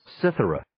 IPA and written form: 'sɪθərə (Cithara)